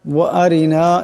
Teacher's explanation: ওয়া আরিনা এখানে রাখে পাতলা আওয়াজে পড়তে হবে